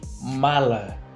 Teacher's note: Notamos que a sílaba ma foi pronunciada mais fortemente que a sílaba lá. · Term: sílaba tônica